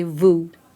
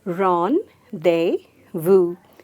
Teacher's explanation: Just eliminate the z sound and eliminate the s sound and just say vu